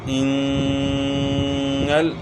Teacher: غنہ کریں گے، نون مشدد ہے